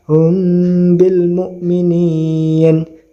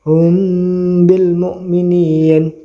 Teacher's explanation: ya dibaca samar contohnya misalkan ee dan juga ada dengungnya ya mimnya dibaca samar terus ada dengungnya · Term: Ikhfa Syafawi